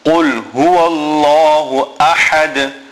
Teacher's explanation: Then Allah Ta'ala's name must be read full mouth because it is preceded by a fatha or what we call a zabar.